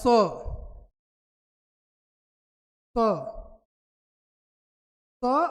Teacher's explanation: आते स और व स छोटा सा रहेगा छोटा वाला स छोटा वाला स कहां से बोला जाता है दंत से बोला